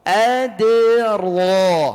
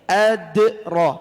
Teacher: dal di sini dal qalqalah sughra. Qalqalah yang kecil.